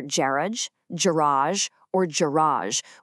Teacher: In the UK, you might hear Garage, garage, or garage with the stress on that first syllable.